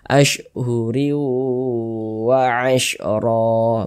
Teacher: cara memasukkan kemudian disertai dengan ghunah atau dengungan ashuriw WA asriw kita tahan kita panjangkan sejenak karena didengungkan ashuriw wa Asro begitu kemudian ro dibaca panjang ro dibaca panjang